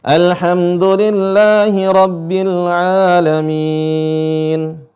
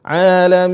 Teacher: [Tertawa] alamin di sini ada Ya Sukun kemudian ada nun sukun alamin dibaca panjang Kenapa karena bertemu dengan nun sukun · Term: Mad Arid lisukun